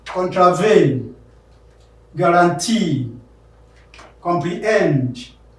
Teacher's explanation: three-syllable words with the last syllable stressed